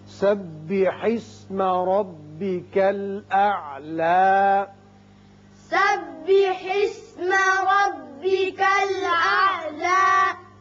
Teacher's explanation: یہاں را کو آپ پر کیجئے اس لیے کہ اوپر زبر ہے۔